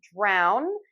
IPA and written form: draʊn (Drown)